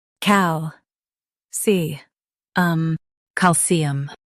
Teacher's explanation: Stress cal and keep cium light.